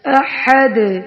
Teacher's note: دال پر کلکلا کریں گے وقف کی صورت میں